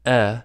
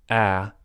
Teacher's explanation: /ɛ/ is a middle front vowel, and /æ/ is a low front vowel.